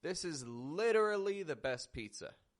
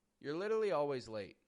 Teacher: I'm pronouncing it quicker I'm not giving it the same strength and emphasis